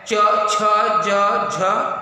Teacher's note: च छ ज झ, तो ये उच्चारण जब कर रहे हैं पूरी की पूरी जिह्वा ऊपर तालु के पास जा रही है, इसलिए इसका उच्चारण, इन वर्णों का उच्चारण स्थान तालु है।